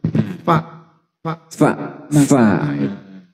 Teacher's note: Gigi saya di atas ketemu dengan bibir bawah